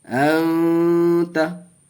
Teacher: اخفا کا قاعدہ، نون ساکن کے بعد حروف اخفا کے 15 حرفوں میں سے تا آیا، گنہ کر کے پڑھیں گے